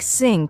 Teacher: for example the th sound in words like think and this many Learners pronounce it as s or Zed like syn instead of think or ziz instead of this